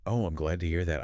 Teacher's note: It kind of went down at the end. It sounded relieved.